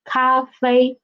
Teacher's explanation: the first tones are on the highest pitch, almost 5, fifth pitch